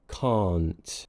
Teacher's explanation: tip of my tongue is releasing from the top of my mouth and I'm pushing air out no voice is used it's unvoiced